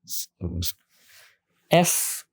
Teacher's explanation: শেষে যে আমরা এফ দেখতে পাচ্ছি খুব ভালো করে খেয়াল করেন এফ আমরা এফ বলি তখন কি হয় আমাদের দাঁতগুলো নিচে যে ঠোট আছে সেখানে লাগে